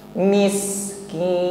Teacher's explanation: huruf sin sukun, sifatnya hamas, jarayadun nafasi, ya, ada nafas yang mengalir